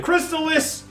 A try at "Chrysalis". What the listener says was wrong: Chrysalis with no T. Chrysalis.